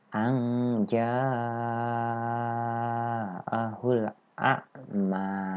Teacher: ja'a itu masuknya mad wajib mutasil, panjangnya 2 alif atau 4 rakaat. Sedangkan mim di sini itu adalah mad tobi'i, yang panjangnya hanya 2 rakaat atau 1 alif ya. · Panjangnya itu 2 alif atau 4 harokat. Sedangkan a'ma ya, ma-nya ini dibaca panjangnya 1 alif, yang artinya panjangnya itu 2 harokat.